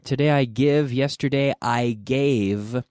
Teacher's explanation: with that V sound, which, like I mentioned in the beginner class, is a vocalized or voiced F.